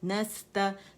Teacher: تا باریک ہے اور زبر کے ساتھ آواز اوپر ہے.